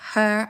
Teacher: glottal sounds like her are made at the glottis, the space between the vocal cords.